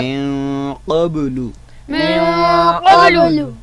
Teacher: तो मिन क़ब्लु में आप देख रहे हैं कि नून साकिन आ रहा है, मगर उसका माबाद जो हरफ़ है वो क़ाफ़ है, उसकी वजह से हम नून को इख़्फ़ा के साथ यानी गुन्ना के साथ पढ़ेंगे।